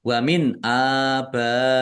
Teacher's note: nun sukun bertemu dengan huruf alif bacaan izhar dibaca jelas ba fathah Alif mad thobbi'i. · maka menjadi mad wajib muttasil. Dibaca panjang harus lima harakat.